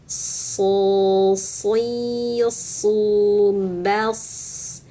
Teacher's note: Kalau huruf shad tengah lidah naik